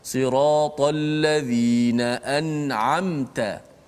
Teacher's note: Ialah wajib diizharkan mim mati itu. Dimatikan mim itu, dijelaskan mim mati itu tanpa dipanjangkan gunnah ataupun dengung. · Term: izhar syafawi